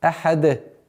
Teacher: При остановке танвин аннулируется и переходит в сукун. И появляется новое правило аль-калкаля, то есть взрывность звука даль